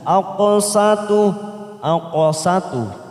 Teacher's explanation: Aqsatu, aqsatu qaf sukun, qalqalah sugro kita pantulkan